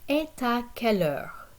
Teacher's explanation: I'm doing a liaison between the T at the end of et and a that comes after it because it's a vowel sound.